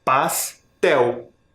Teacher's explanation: O tel é a sílaba tônica, ou seja, a última sílaba mais forte